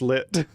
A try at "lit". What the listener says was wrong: No, yeah, you don't pronounce the T. Like just as a rule of thumb, if there's a consonant at the end of the word and it isn't followed by like an E, you don't pronounce it. It's